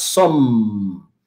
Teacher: Entonces decimos some y dejamos los labios cerrados.